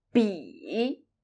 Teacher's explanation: when you pronounce 比, make sure you start from a very low end of your vocal range. 比, 不, 不, 不 can be pronounced with a slight exaggeration, like an angry no. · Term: third tone